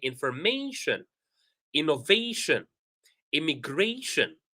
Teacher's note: whenever we have the syllable before shin, we stress that syllable.